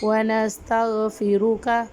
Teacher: را کو ہم پر پڑھیں گے کیونکہ را کے اوپر پیش ہے